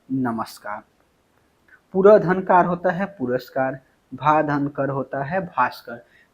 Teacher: लेकिन ध्यान रखना है कुछ शब्दों में विसर्ग का स हो जाता है